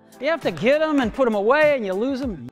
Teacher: Every time he says them in this clip, you'll notice that the TH sound is basically silent. He reduces it to You have to get them and put them away and you lose them.